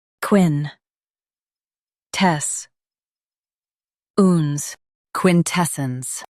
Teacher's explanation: Stress tes and keep sence soft. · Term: Stress tess